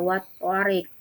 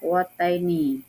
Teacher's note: cara membacanya lam mati dibaca tidak jelas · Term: idgham syamsiyah